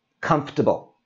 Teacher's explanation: common to pronounce this as comfortable that's a long word comfortable so we drop out the o and the r that whole sound and this becomes comfortable